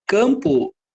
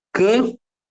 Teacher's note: a letra a ela ganhou um assento de nasalização que a letra M fez nela